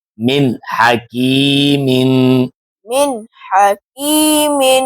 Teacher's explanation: ہا زبر، ها زبر ہا، ها کاف زیر یا ساکن، كاف زير يا ساكن کی، كي کی کنٹرول کریں، کی، كي ہا کی، حكي میم دو زیر، ميم دو زير من، من حکیم، حكيم من حکیم، من حكيم دیکھیے جی نون ساکن کے بعد حروف حلقی میں سے ہا آ گیا ہے، اس وجہ سے نون ساکن کی آواز کو ظاہر کر کے پڑھیں گے۔